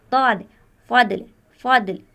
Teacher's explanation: لفظ فضل میں بھی ضاد کا مخرج زبان کے حافیہ سے ادا کیا جاتا ہے